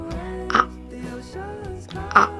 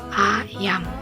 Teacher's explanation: mulut agak terbuka lebar, lidah berada di bawah